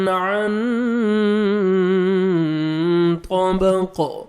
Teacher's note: عن طا کو موٹا کر کے پڑھیں گے اور قاف ساکن ہو جائے گا تو قلقلہ ہوئے گا ڈبل